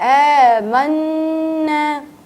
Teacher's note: کیونکہ نون پر آپ کو لگی ہے تشدید, تو ہم اسے ذرا سا غنہ کریں گے